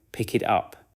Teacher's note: In pick it up, the final consonants connect to the following vowels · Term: Connected speech